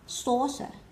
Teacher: trọng âm nó rơi vào âm tiết đầu tiên